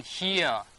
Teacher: I'm not pronouncing this R. R is silent. Yako British pronunciation nusa R ko bangi gamata, diba?